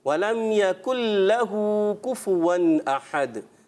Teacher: ماشاءاللہ اچھی کوشش کی، اچھا پڑھا، مگر آخر میں ولم یقل لہ، کاف جو ہے تھوڑا موٹا محسوس ہوا. ولم یقل لہ، کاف باریک رہے آخر والا